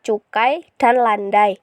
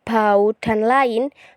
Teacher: yang dihasilkan bukan dua buah bunyi melainkan hanya sebuah bunyi karena berada dalam satu silabel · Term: diftong